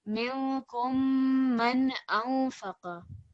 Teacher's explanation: We have a nasal noon and then we have a clear noon.